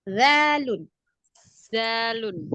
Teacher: Coba jangan terlalu nempel banget, agak longgar sedikit. Persentuhan ujung lidahnya ke ujung gigi. Jadi agak sentuhnya manja. Zalun biar ada rohwahnya.